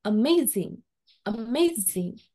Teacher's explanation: primary stress is on the second syllable